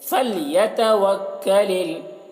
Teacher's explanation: کاف کو باریک پڑھنا ہے